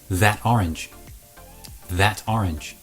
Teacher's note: But here you might hear that the t at the end of that actually changes and becomes a d